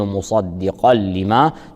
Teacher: الصاد حرف استعلاء مفتوح يفخم بثاني مراتب التفخيم، والقاف مفتوح حرف استعلاء مفتوح، القاف حرف استعلاء مفتوح يفخم بثاني مراتب التفخيم فنقول مصدقا لما.